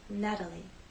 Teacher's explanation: the T having very quick light contact